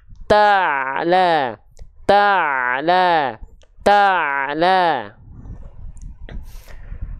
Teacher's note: epiglotis ya katup epiglotis jadi ketika dilafalkan di e tengahtenggorokannya nanti katup epiglotisnya itu Ditekan jadi dia agak sedikit mendekat ke dinding dinding tenggorokan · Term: Ain